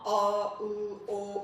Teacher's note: qalın saitlər dilin arxa hissəsində kökündə səsləndiyinə görə onlar dil arxası saitlər adlanır